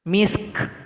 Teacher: Nah, jadi 2 huruf sukun seperti ini harus dibaca dengan hamas. Harus ada bunyi nafas ketika membunyikan huruf kaf. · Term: bunyi hamas